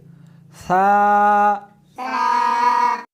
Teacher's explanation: اس حرف کو زبان کو دونوں دانتوں کے درمیان رکھ کر پڑھیں گے۔